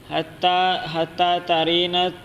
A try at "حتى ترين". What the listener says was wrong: نہیں ترین نہیں، ترینا، ترینا قصوہ نہیں، القصۃ